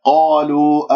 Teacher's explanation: القاف مفخمة مرتبة أولى لأنها مفتوحة بعدها ألف، لا تكور الشفاء، تقول قالوا خطأ، وعندك مد طبيعي ألف ساكن قبلها مفتوح.